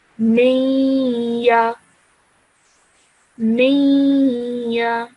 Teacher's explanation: Okay, so I'm not saying miya, I'm saying miya. So I'm producing a nasal sound from my nose for 2 seconds as I join the meme to the ya.